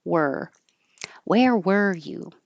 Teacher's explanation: forget about any vowel sound you're just making the r position so the tongue gets curled back to the R